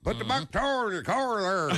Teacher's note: North Georgia, everything got an R in it.